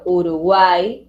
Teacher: Una vocal abierta en medio de dos vocales cerradas. Ahí tenemos, por ejemplo, Uruguay, UAI, vocal cerrada, abierta, cerrada. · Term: triptongo